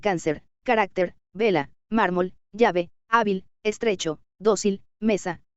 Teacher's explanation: Graves o llanas, la mayor fuerza de voz sobre la penúltima sílaba